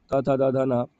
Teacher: त वर्ग का जितना भी है त थ द ध न, सब का उच्चारण स्थान जो होगा वो है दंत